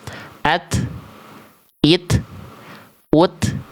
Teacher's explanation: ketika sukun percikan nafasnya lebih terasa